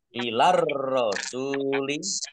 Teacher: ar-rasuli alif lam syamsiyah karena tidak dibaca, langsung masuk ke huruf berikutnya, yaitu ro, tandai roknya ada tasdidnya.